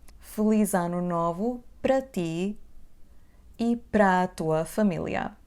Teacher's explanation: we will just prolong the ending a in the preposition pra, so it will become pra.